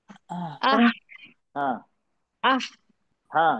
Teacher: सिर्फ सांस की आवाज है उसमें साउंड नहीं है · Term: बीच का ह